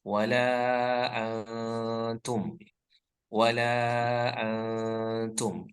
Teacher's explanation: antumnya jangan diizharkan ya, tapi disamarkan yaitu antara jelas dan dengung ya. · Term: ikhfa